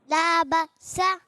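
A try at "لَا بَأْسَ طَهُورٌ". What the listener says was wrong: بکسا نہیں, باسا.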